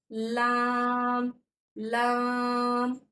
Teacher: उसके मसूड़ों से लगाएंगे और बारीक आवाज में हमारा लाम लाम अदा होगा